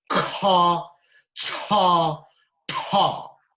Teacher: These are aspirated, as a strong breath of air follows, right from your stomach.